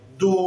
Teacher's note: वाव साकिन से पहले और दौद के ऊपर पेश है, ये हरूफ मद्दा है, इसको पूरा एक अलिफ लंबा करेंगे